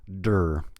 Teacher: the word under is spelled with an E before the R, but you want to skip that. We go directly from the D to the R.